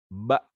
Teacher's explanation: huruf ba itu punya makhraj, badan bibir atas dan bawah. Badan bibir atas dan bawah dipertemukan. Badan bibir atau perut bibir.